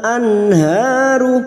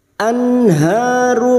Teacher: maka nun sukun dibaca jelas tanpa mendengung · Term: Idhar halq